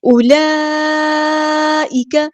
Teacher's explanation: اولئک، یہاں پہ آپ کو مد دکھ رہی ہے، کنیکٹڈ مد ہے، مد متصل، 4 یا 5 کاؤنٹ لمبا کرنا ہے، کیونکہ اسی کلمے میں مد ہے اور اس کے فوراً بعد حمزہ بھی اسی کلمے میں ہے اپنی اصلی شکل میں، تو یہ ہمارے پاس کنیکٹڈ مد، مد متصل یعنی بڑی مد ہے۔